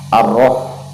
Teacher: ha ini makhrajnya berada di tengah-tengah tenggorokan, atau dalam istilah tajwid itu kita sebut dengan wasatul halqi.